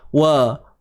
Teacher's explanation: Jangan wallah. Yang tebal pada lam sahaja. Lam pada kalimah Allah sahaja. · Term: kalimah Allah kena tebal